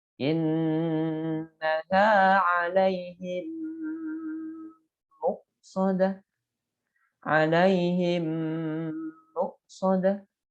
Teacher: Kemudian idgham mimi atau idgham mithlain ketika ada mim mati bertemu dengan mim, maka dibacanya harus dimasukkan ke huruf mim dan disertai gunnah.